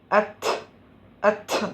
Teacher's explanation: അറബിയിൽ അത്ത് അത്ത് കാറ്റ് വരും സുക്കൂനാവുമ്പോഴത്തേക്ക്. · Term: കാറ്റിൻ്റെ ശബ്ദം